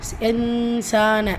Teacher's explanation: சோ யா ஐயுஹல் சேர்த்துதான் சொல்லுவோம் இன்சானு நூன் சுக்குனை தொடர்ந்து சீன் இருக்கு இந்த இடத்துல நூனை பாதி மறைச்சு குன்னா செஞ்சு ஓதணும் · அலிஃப் சொகிரா இருக்கு இரண்டாவது ரக்கத்து அளவு நீட்டம் கொடுக்கணும்